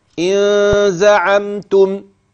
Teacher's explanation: هذه الغنه واضحه بينه ظاهره بمقدار حركتين لا تقل ان النون هنا ساكنه لا غنه فيها لا اخفيت